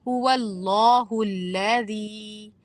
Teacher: لام کو باریک پڑھیں گے الذی میں